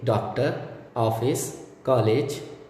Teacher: इसे दर्शाने के लिए अर्धचंद्राकार लगाया जाता है, जैसे डॉक्टर, ऑफिस, कॉलेज आदि। इन शब्दों की ध्वनियाँ क्रमशः डा और डो, आ और ओ, का और को के मध्य की हैं। इनके उच्चारण के समय मुंह आधा खुला रहता है।